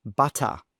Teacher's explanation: when a t sound is in the middle of a word sometimes it might sound more like a soft D sound